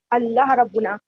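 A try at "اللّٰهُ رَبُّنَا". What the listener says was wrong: پورا صحیح حرکت کے ساتھ بولیے، لفظ کے ساتھ. ربنا نہیں، اللہ ربنا نہیں. اردو نہیں کہہ رہے ہیں آپ، اردو پڑھ رہے ہیں، عربی پڑھ رہے ہیں. ربنا، ایک ایک حرکت کو ظاہر کرنا.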